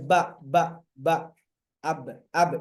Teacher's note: Kalau ba dan mim ada rapat sepenuhnya